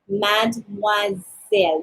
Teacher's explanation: make sure that you pronounce the S like Z because it's between two vowels. Instead of saying mademoiselle, it's mademoiselle, like Z.